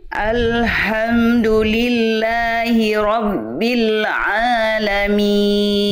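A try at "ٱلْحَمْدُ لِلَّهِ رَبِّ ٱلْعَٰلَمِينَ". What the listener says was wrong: bagus lanjut Masyaallah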